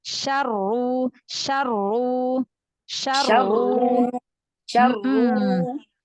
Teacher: ro kalau dia tafkhim yang tasydid sukunnya itu udah langsung tebal